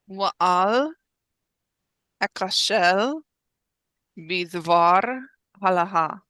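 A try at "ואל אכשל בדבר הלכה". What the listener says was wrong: Maybe you did, and it's just the audio quality, but we want to make sure that the chaf can really be heard well. yes, as opposed to het, which is a much more delicate sound.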